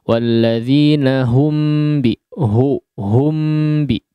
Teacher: huruf H-nya jangan sampai ikut disertai dengan khayshum ya, atau disertai dengan gunnah